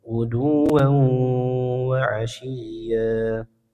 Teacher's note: Hukumnya igam bunah ya. Tanwinnya menebur ke huruf wau disertai gunah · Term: idgham bi gunnah